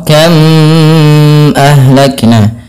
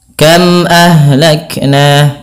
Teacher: Yang dalam membacanya harus diperjelas suara mimnya dan tidak boleh ada penahanan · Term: izhar syafawi